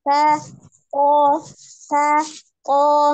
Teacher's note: ujung lidahnya berada di pangkal gigi seri bagian atas ya. Tetapi secara sifat jelas atau samar, maka huruf ta samar ya.